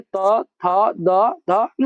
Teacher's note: द का उच्चारण स्थान दंत होता है